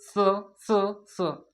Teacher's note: इसका उच्चारण दांतों से होता है। जीभ दांत को टच करेगा।